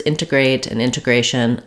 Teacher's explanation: I pronounced it with the first T sound as an aspirated T